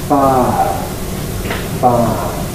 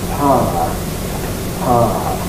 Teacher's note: very often, we neglect to actually pronounce the second part of the diphthong in this sort of environment. And rather than saying fire, we can say fire, fire. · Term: smoothing